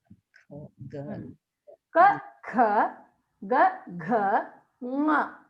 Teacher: They are called kanthya shabd because they come from the throat.